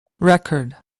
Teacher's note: Penekanan pada suku kata pertama, dan itu nggak pakai ri, tapi pakai re.